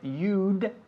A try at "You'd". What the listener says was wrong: You'd. You'd. You'd. Pero tienes que enfatizar más tu D. ¿Lo estáis escuchando? You'd. Como lo hago yo.